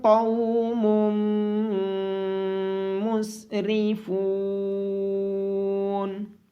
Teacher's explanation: نون ساکن کے بعد حروف اخفا میں سے تا ہونے کی وجہ سے یہاں پہ اخفا ہوگا۔ میم کے اوپر تشدید ہونے کی وجہ سے میم پہ غنہ کیا جائے گا۔ یہاں پہ را کو باریک آواز کے ساتھ پڑھا جائے گا، اور فا کے بعد واو مدہ ہونے کی وجہ سے فا کو لمبا کیا جائے گا۔